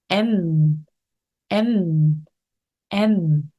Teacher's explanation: 다음입니다 m 굉장히 쉽죠 가볍게에 벌린 상태로 m 다물어 주시면 됩니다 m 하고 다 물었을 때 코끝이 간질간질 울려 나오죠